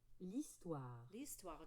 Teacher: Do you see that H is silent, right? It acts like a vowel.